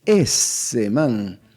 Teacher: la S también puede alargarse en la pronunciación costeña